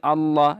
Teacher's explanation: next ہے اللہ، لفظ اللہ ادھر پر ہوگا کیونکہ لفظ اللہ سے پہلے زبر ہے، اور جب بھی لفظ اللہ سے پہلے زبر ہو تو اس کو پر پڑھا جاتا ہے